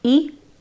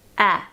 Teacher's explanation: Now pronounce just the vowels of these two words, e, a. Notice that as you go from the vowel of e to the vowel of a, your mouth opens.